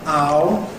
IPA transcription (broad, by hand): aʊ